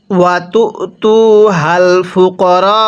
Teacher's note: রয়ের মধ্যে আমরা চার আলিফ টান দিব, কারণ মদের হরফের উপর এরকম মোটা চিহ্ন এরপরে গোল হামজা থাকলে সেখানে চার আলিফ টেনে পড়তে হয়।